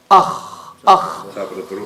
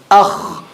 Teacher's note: Top of the throat. And it's a heavy letter. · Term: kha